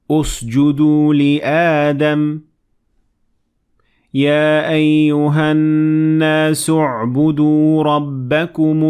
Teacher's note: when I connected the Hamzat Wasl to what comes before it, I completely ignored it. But when I started at it, I pronounced Hamzat Wasl and I added Dhamma on top of it because the third letter, the word U'budu, the ba has Dhamma on top of it, so this means that we will say U'budu.